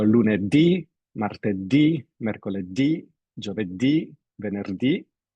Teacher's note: As you see, the days of the weekdays are accented on the final vowel. So the pronunciation, the stress when you pronounce a word will fall on the last syllable.